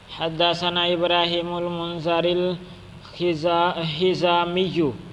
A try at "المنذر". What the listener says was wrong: تھوڑی سی غلطی کی آپ نے. منظر نہیں پڑھنا منذر.